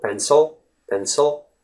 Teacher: The word pencil, the letter I actually becomes the schwa sound